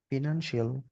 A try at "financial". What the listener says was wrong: ফিনান্সিয়াল না, ফিনান্সিয়াল। ফিনান্সিয়াল শিয়াল হবে না, এটা সল হবে। আর ন্যানে স্ট্রেস পড়বে ফিনান্সিয়াল। এই যে আমরা যদি এখানে দেখি ফাইও হয় ফিও হয়, নো প্রবলেম, বাট আমি আসলে যেটা দেখতে চাই স্ট্রেসটা কোন জায়গায়। ফাইন্যান্সিয়াল স্ট্রেস আর কি, ফাইন্যান্সিয়াল